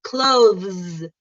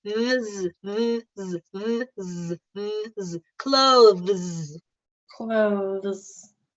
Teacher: Don't add a vowel. Don't add a vowel in between the V and the Z. Go directly from V to Z.